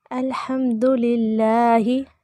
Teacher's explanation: यहाँ पर हा को लंबा नहीं करना, अल्हम्दुलिल्लाहि ये नहीं होना चाहिए, ही इसे खींचना नहीं है।